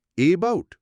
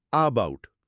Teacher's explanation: না, আমরা বলি আবাউট। ওই যে শুরুতে একটা খুব দ্রুত হালকা আয়ের মতো ধ্বনি হলো, ওটাই শোয়া।